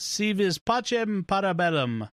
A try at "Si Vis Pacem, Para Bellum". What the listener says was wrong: Howdy, although you're using a Latin rather than, or an Italian rather than Latin pronunciation there, but okay.